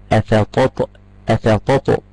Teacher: شوف الطاء بعمل فيها ذبذبه تميل الى الفتح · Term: القلقله